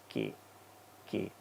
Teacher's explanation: when I put the hand on the throat, when making the K sound, no movement should be felt on the throat.